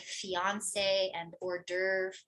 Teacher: it's going to keep a French stress rule, which is last syllable stressed